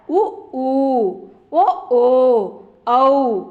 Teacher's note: வாய் திறக்கும் முயற்சியுடன் இதழ்களை குவிப்பதால் பிறக்கும் உயிரெழுத்துக்கள்